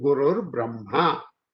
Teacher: Guruhu Brahma, and then you drop this Visarga and use a R, say half Ra, and Guruhu Brahma, that half Ra plus Bra, then become Gurur Brahma, like that.